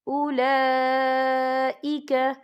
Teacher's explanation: یہ مد جو ہے مد متصل ہے، اس کی مقدار 4 حرکت کے برابر ہے، تو ہم اسے 4 حرکت کے برابر کھینچ کے پڑھیں گے۔